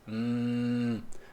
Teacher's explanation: os lábios Fecha os lábios Hum parece o som da vaca ele é um som vozeado você percebe a vibração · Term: som do M